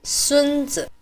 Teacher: pronounced as a first tone and a neutral fifth tone meaning grandson